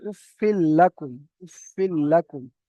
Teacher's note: দেখেছেন এখানে নুন সাকিন, তাহলে তানবিন ও নুন সাকিনকে বিনা গুণনায় মিলিয়ে পড়তে হবে। তাহলে এখানে গুণনা হবে না, অথচ এই লামের সঙ্গে মিলিয়ে পড়তে হবে।